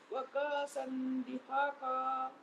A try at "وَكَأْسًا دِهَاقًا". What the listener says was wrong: کاسن نہیں کأسن.